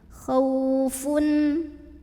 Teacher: izhar halqi karena ada tanwin bom Mas ketemu sama huruf Ain maka tanwinnya dibaca jelas bunyi n dan tidak ditahan